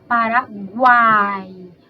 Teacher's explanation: o som mais forte desse tritongo é o a que a nossa vogal e aí a gente tem o i